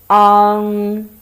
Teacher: let the air flow through your nose say on [Music] um you feel the air flow through your nose very strongly · you first pronounce ah then let the air flow through your nose